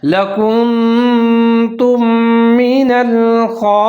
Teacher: دونوں میم کو ہم ساتھ میں ملا کے پڑھیں گے، ادغام کریں گے غنے کے ساتھ